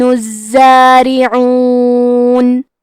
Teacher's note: حرف را کے نیچے زیر ہے تو یہاں را کا حکم ہے ترقیق، تو ہم حرف را کو پتلی آواز میں پڑھیں گے